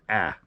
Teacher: I tend to slightly alter the alpha so it's pronounced a little bit more nasal